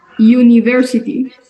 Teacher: podríamos decir como una Y, no tan yu, no como yuca, sino university.